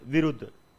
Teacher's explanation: यह एक संयुक्ताक्षर 'dh' है, जिसे अंत के रूप में पढ़ा जाता है, एक सघोष महाप्राण के रूप में पढ़ा जाता है , इसलिए हम इस पर जोर या प्रभाव नहीं डाल सकते।